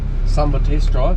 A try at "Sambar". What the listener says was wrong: Stop calling it Samba. Sambar.